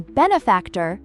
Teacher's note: the stress in benefactor is on the first syllable